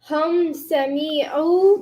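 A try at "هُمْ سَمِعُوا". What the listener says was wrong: The me was too long again.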